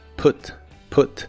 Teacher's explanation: Se pronuncia con una u corta y explosiva, put, put, y se usa en ideas como can you put the luggage here please?